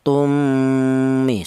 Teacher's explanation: Ini dibaca gunah ada dengungnya dua ketukan